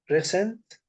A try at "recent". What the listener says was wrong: Yeah, the stress is on E, recent. So the stress is not on C like recent, it is recent.